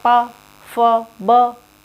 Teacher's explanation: होठों से जब हम बोलते हैं पा, फ, ब, होठ चिपक रहे ना आपस में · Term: ओष्ठ